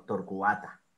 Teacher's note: cua no suena como una sola sílaba sino como dos Porque son dos sílabas torcuata y el acento está en la a